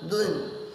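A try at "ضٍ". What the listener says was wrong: মুখ গোল করে না, দুইন দুইন। মুখটা খালি স্বাভাবিক রাখবেন তাহলে হবে।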